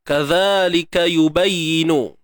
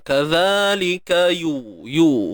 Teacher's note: Huruf ya baris depan yu muncul bibir mulut.